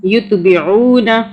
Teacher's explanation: لا یتبعون، عین کو عین واو پیش او، 1 الف کے برابر او پڑھا، اور عین کو حلق سے پڑھنا ہے. یتبعون، 3 الف کے برابر مدہ کو کھینچا.